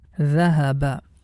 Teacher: Each one we have to make it quick because there is no long vowel